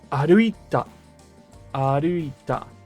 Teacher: The ku gets dropped completely, right? You don't have to recreate the ku or the k sound when aruku becomes aruit ta.